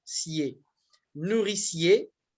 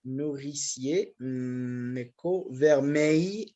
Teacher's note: on fusionne les voyelles et on ne les sépare pas